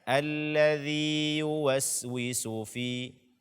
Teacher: Jangan sampai kita tasdidkan ya pertama ke dalam ya kedua.